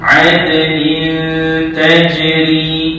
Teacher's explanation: Nin tajri itu dengung 2 harakat. Kenapa? Kerana ada tanwin 2 baris di bawah yang tidak selari bertemu ta, hukumnya jadi ikhfa hakiki.